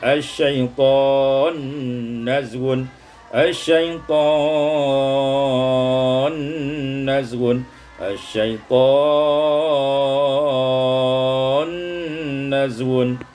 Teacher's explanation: diidghamkan nun pada nun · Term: idgham nun fin nun